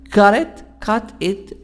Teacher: Between two vowels, it's gonna be soft D or fast D.